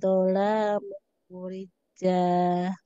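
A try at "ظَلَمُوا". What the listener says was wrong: Sekarang la-nya Bu ya, la-nya kebaca panjang juga. La-nya pendek juga Bu ya.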